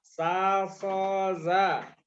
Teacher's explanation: ujung lidah hampir bertemu gigi seri bawah